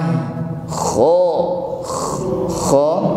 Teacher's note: Kho ada gesekan di tenggorokan yang paling atas. Kho ada bunyi ngorok okay?